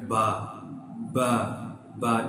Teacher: When you press the 2 lips together and release them, produces a letter ba, ba, ba. You press upper and lower lips, ba, ba.